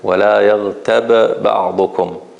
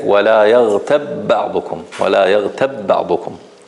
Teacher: So I'm merging the first ba into the second one. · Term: idgham